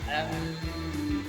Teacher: Di situ ada nun sukun, setelahnya huruf ba, dan itu dibaca durasinya yaitu sekitar satu alif atau dua harokat. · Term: iqlab